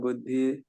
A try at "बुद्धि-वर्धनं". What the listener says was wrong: बुद्धिवर्धनम, ठीक है, वो बुद्धि नहीं है प्रभु जी, बुद्धि होता है जब द के पैर में ध लगाओ, ठीक है, बुद्धि, बुद्धि, बुद्धिवर्धनम।